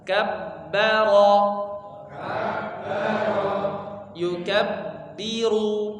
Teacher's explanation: huruf bertasydid intinya ditekan, kemudian ya ditahan seukuran kita membaca satu huruf, satu harokat ya. Jadi bukan dua harokat ditahannya, bukan kabbaro tidak, tapi sekedar kabbaro, sekedar seukuran membaca satu huruf.